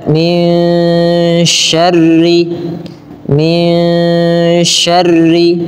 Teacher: Nun ketika bertemu dengan syin suara nunnya tidak diperjelas tapi disamarkan kepada huruf syin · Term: ikhfa